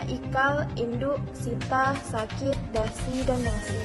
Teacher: fonem I, vokal tertinggi depan tak bulat